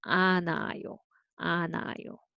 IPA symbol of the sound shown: 아나요